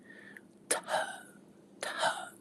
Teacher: You know, it originally probably sounded like th th, like aspirated t sound. Like a popping t sound.